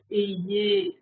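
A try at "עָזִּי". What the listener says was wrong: Attention, on dira Y, mais c'est un Ain. Attention, on a dit qu'il y a une exception, c'est écrit A, mais on doit prononcer Ozi,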